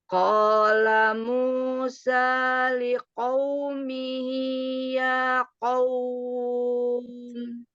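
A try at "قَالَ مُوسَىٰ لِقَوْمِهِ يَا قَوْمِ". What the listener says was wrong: Iya, masih belum ke belakang ya. Nanti belajar makhrajnya. Qaf itu pangkal lidah atas ketemu dengan langit yang lembek. Cari langit lembeknya ya. Di situ.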